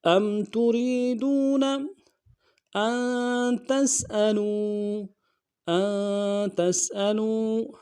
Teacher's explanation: تريدون ان تسألوا حمزہ کو نون ساکن کے ساتھ ملانا ہے، نون ساکن میں غنہ کریں گے ، تا کو سین کے ساتھ ملانا ہے، سین کی سیٹی